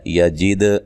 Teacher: یجد، دال پہ قلقلہ کرنا ہے